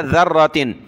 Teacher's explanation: یہاں ذال پر زبان نکالیں